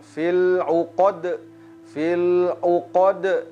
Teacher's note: ada qalqalah pada huruf dal